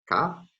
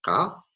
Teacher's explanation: the distinction between a velar voiceless stop ka and a voiceless uvular stop ka